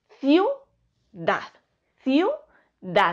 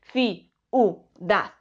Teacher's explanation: la i y la u también quedan unidas se pronuncian en un solo golpe de voz y forman diptongo